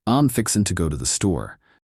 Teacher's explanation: In the United States, for example, a person from Texas may say, "I'm fixing to go to the store." Drawing out their vowels with a warm southern tone.